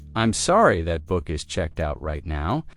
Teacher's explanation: Stress checked out to make it clear.